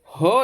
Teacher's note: ह जो है वह संघर्षी व्यंजन होता है